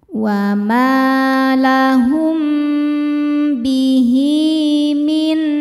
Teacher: Karena ada ha damir yang diapit dua huruf hidup dan setelahnya bukan hamzah, setelahnya mim. Ya, maka ha damirnya panjang dua harakat. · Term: mad silah qasirah